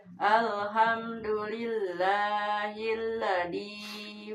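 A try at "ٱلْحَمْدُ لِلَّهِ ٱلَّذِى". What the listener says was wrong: Za. Alhamdulillahillazi. Zal empuk ya. Zi.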